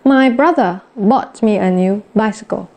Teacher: Cái chữ buy nó vẫn mạnh hơn, cái chữ bra nó vẫn mạnh hơn. Và nhìn chung là toàn câu đi xuống. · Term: falling